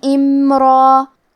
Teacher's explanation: آخر میں را پہ تنوین زبر ہے، ہم یہ کلمہ پہ رکیں گے تو تنوین زبر پہ مد الف سے رکیں گے